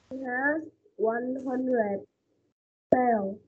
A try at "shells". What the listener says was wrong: Shells. Shells. Có xì không? Con cô con chưa có nghe từ xì S mà sao nha. Số nhiều là mình phải đọc xì nha.